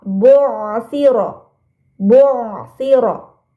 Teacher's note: pada kata bu'asira, ain sukunya harus dibaca jelas.